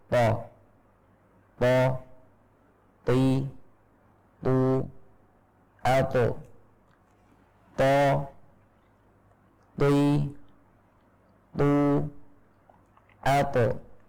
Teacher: Huruf to diucapkan dari ujung lidah bersama dengan pangkal gigi seri atas.